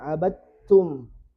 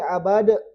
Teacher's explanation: ini dalnya sudah gak dibaca langsung ditasdid huruf setelahnya